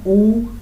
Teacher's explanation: ऊ तो ओष्ठ से होता है, ओष्ठ